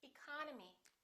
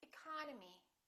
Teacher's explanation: the second syllable is stressed therefore this e and this o are reduced